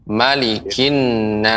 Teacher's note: disini dalam surah an-nas pengucapan mim dibaca pendek